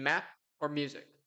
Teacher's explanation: The first area of sound creation is bilabial, which is a sound articulated with both lips. This is M in map or music.